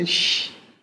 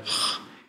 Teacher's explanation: Eine palatale Variante Ich und eine velare Variante Ch, je nach Kontext im Deutschen.